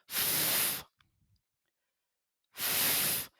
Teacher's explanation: les dents supérieures sont sur la lèvre inférieure